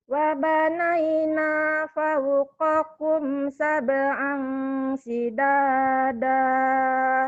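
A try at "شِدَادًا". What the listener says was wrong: Shinnya nggak keluar. Shidada. Shin. Jangan sidada. Sidada. Wa banaina fauqakum sab'a shidada. Udah bagus, tapi shinnya kemana ya? Shidada.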